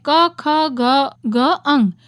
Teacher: એનો ઉચ્ચાર કરતી વખતે કંઠમાંથી ધ્વનિ નીકળે છે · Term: કંઠવ્ય